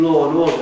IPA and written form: ˈlɔː ən ˋɔːdə (law and order)